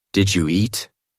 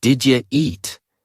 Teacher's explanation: The u blends with did and sounds like ja. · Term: connected speech